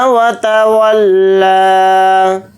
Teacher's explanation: واو کو جلدی پڑھیں گے، واو کو لام کے ساتھ ملا کر پڑھیں گے. لام کے اوپر کھڑا زبر ہے، لام کو تھوڑا کھینچ کر پڑھیں گے، ایک الف کی مقدار